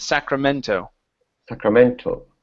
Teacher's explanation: So instead of Sacramento, put the stress at the end.